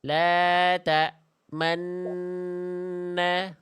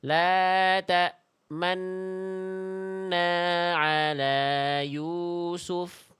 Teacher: Nuna ada nu dan na digabung nu dan nanya jadi enna. Jadi nunnya pakai isyarat bibir maju namanya ismam